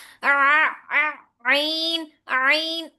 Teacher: عین جو ہے وہ وسط اور حلق کے درمیانی حصے سے نکلے گا، आइन आइन, आप वाज़िह तौर पे हाथ रखेंगे तो आपको वाइब्रेशन महसूस होगी इस जगह पे, ठीक है।